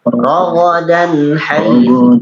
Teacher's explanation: Dari tanwin bertemu dengan huruf ha. Izhar. Ya, izhar halqi.